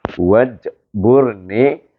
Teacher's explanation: jim adalah qalqalah sughra. Jadi kita lahirkan bunyi qalqalah itu. Qalqalah sughra.